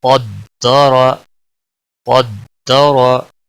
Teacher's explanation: قاف دال زبر قد، دال زبر دا، قد دا، را زبر را، قد دارا، قد دارا۔ قاف بھی موٹا پڑا جائے گا اور را کے اوپر بھی زبر ہے، اس لیے اس کو بھی موٹا پڑا جائے گا